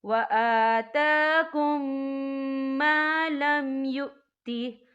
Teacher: اور آگے دیکھیں وَآتَاكُم، یہاں میم ساکن ہے، میم ساکن کے بعد جو ہے میم مشدد حروف آ رہا ہے، تو یہاں پر ادغام شفوی ہوگا، تو ہم پچھلے میم کو اگلے میم میں مدغم کریں گے اور ہم یہاں غنہ بھی کریں گے